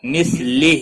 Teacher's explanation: ہا کے نیچے کھڑی زیر ہے، ایک الف کے برابر کھینچ کر پڑھیں گے